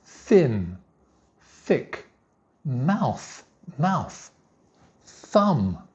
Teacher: There's no voice for the TH sound.